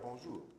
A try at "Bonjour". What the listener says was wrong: Non, là t'as l'air de me dire au revoir. Dis-moi vraiment bonjour.